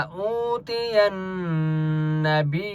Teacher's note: نون کے اوپر تشدید ہے یہاں پر غنہ ہوگا